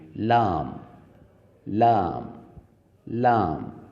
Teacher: لام ادا کرنے کے لیے زبان کی جو نوک ہے اس کو سامنے کے جو اوپر والے دانت ہیں ان کے مسوڑھوں سے لگا کر اس لفظ کو ادا کریں گے